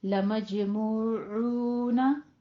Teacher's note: लमजमूऊना, मज में जीम के ऊपर कलकला करना है, मूऊना दोनों होंठों को गोल करके 2 काउंट कीजिए